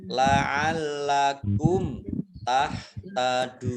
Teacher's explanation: mim sukun bertemu dengan huruf ta bacaan izhar syafawi dibaca jelas, dal domah wawu sukun mat tobi'i, tetapi karena bertemu dengan huruf terakhir yang dibaca sukun karena waqaf, maka menjadi mat arid lis sukun, dibaca panjang 2, 4 atau 6 harokat.